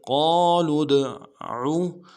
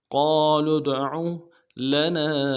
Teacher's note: عین کو موٹا ادا کریں گے، عین کے پیش کو بغیر کھینچے پڑیں گے